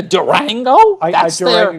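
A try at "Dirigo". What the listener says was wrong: Durango is it really Durango or Dringo? D-I-R-I... Dorigo. There's no N. Dorigo. You go Dorigo.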